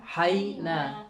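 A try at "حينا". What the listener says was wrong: میں نے تعریف شاید زیادہ کر دی تھی آپ کی نون پہ، یہاں پھر آپ نے نون کے ساتھ غنہ شامل کر دیا. مجھے غور سے سنیے گا، حینا، حینا، نا، آپ کیا پڑھ رہے ہیں؟ نا، حینا،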